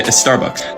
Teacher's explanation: Native English speakers have no problem saying sta or spa or ska at the beginning of a word, but Spanish speakers will often add an E.